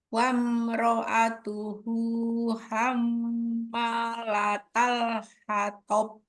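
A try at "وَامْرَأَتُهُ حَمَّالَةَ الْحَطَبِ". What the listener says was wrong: Berakhirnya jangan terlalu lama ke kol-kolahnya. Malatal hatob. Gitu ya.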